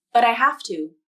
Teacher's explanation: The T in but becomes the flap because the T is between two vowels, and the second vowel is in an unstressed syllable.